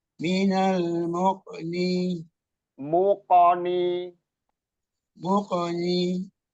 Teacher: Istila itu suaranya itu tebal atau berat karena di terangkatnya anak lidah atau pangkal lidah ke langit-langit atas. · asal tempat keluarnya suaranya itu di lidah bagian terdalam ya atau pangkal lidah · Jadi harus dipantulkan. Namanya qalqalah memantul.